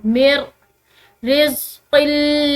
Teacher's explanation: अब ये मिर, ठीक है, मीम के बाद जो ये नून साकिन है, इसको हम नहीं पढ़ेंगे, बल्कि मीम को रा के साथ मिलाएंगे